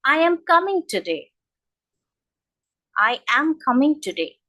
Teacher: if I'm giving a statement, or if I say well, I'm giving an answer to this question, so there will be a falling intonation